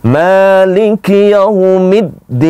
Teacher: Middin itu dal bertasjid. Jadi bacaannya jangan seolah-olah dalnya itu tidak ada tasjidnya.